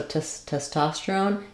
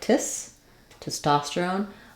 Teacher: our first syllable test is not going to be stressed